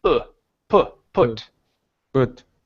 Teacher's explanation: you don't want the vowel to be so long we don't want to sing the vowel but just a quick one